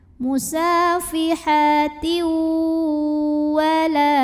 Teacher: Maka tanwin kasrah ini masuk ke waw. Musafihatiu dan tahan dengungkan. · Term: idgham bi gunnah